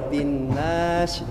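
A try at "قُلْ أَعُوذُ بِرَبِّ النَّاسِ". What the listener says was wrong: Nah, itu udah benar sinnya. Rob belum, nunnya kecepatan, jangan buru-buru. Coba ditahan 4 ketukan.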